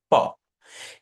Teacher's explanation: দুইটা ঠোঁট একসাথে করে আপনি বলছেন প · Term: ওষ্ঠবর্ণ